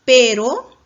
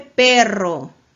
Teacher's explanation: vibrante simple pero pero vibrante múltiple perro